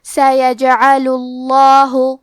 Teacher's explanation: آخری میں لام پہ پیش ہے، تو ہم پیش کو ظاہر کریں گے اور لفظ الجلالہ مطلب کلمت اللہ کے لام کو موٹی آواز میں پڑھیں گے